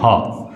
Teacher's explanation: इसका मतलब यह हुआ कि ह जो व्यंजन है वो महाप्राण भी होगा और सघोष भी होगा